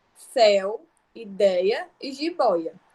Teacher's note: possui um timbre aberto e a passagem se dá exclusivamente pela boca · Então, o som vai sair o outro exclusivamente pela boca, esse aqui tanto pela boca quanto pelo nariz, nasal. E aberto possui um timbre aberto e a passagem de ar se dá exclusivamente pela boca.